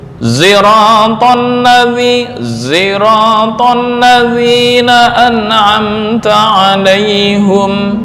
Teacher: Ini dibaca ismam, artinya ismam, shad dibaca za, zirata mencampurkan tadi ya.